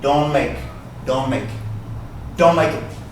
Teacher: this T sound disappears and you run it together